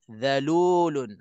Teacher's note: masukkan tanwin ke dalam la sepenuhnya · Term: Idam bila gunah